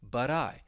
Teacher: The T is at the end of the word, but because the next word begins with a vowel sound, you're going to hear me pronounce that as a flap T, but I. You should hear that soft D, but I.